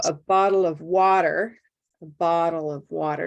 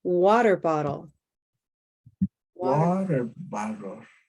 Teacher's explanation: both water and bottle are Olive sock words but together there's just one major stress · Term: compound stress